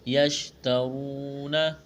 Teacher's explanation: خاشعین للہ، لا الف مدہ ہے، ایک الف کے برابر کھینچنا ہے۔ یشترون، را کے اوپر پیش ہے، موٹا کریں گے · یشترون، را کے اوپر پیش ہے، موٹا کریں گے، واو مدہ ہے، ایک الف کے برابر کھینچنا ہے